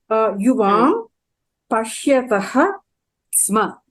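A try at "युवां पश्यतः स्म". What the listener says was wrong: Pashyataha sma. Samyak.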